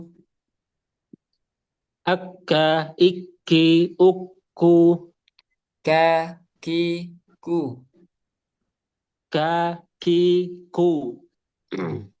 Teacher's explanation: Jadi ada hamsnya terus ketika mengucapkan huruf kaf.